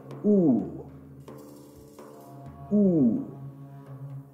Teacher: it is a close back rounded vowel, and it is produced with the tongue being positioned close to the roof of the mouth and back of the mouth without creating a constriction, with the corners of the lips are drawn together and the inner surfaces exposed.